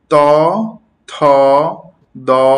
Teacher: ত থ দ এগুলো হচ্ছে দন্তন বর্ণ। অর্থাৎ যেগুলো দন্ত বা দাঁতের কাছাকাছি থেকে উচ্চারিত হয়।